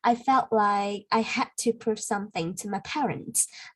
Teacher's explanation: we don't need to put the T sound, the K, the D sound there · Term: stop sounds